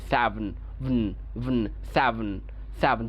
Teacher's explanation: ভ এবং ন এই যে সিলেবল এটা সিলাবিক নয়ের দ্বারা তৈরি হয়েছে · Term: সিলাবিক কনসোনেন্ট